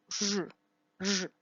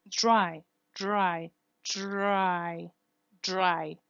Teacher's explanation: This is called the fricative R, and it's pronounced R, R. You see that it has friction. It's not R, but R.